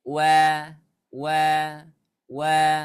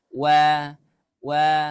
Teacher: huruf wau itu huruf yang tipis ya ketika diucapkan itu suaranya enggak tebal suaranya enggak naik